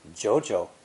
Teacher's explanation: when saying two third tones together it's almost impossible to drop your voice twice in a row so many speakers say the previous character with a rising tone before dipping into the proper low tone